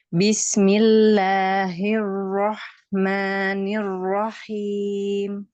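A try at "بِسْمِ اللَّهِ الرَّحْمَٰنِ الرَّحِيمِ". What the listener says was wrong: Bisa lebih getar lagi R-nya, ro-nya. Jangan takut sama ro. Bismillahirrahmanirrahim.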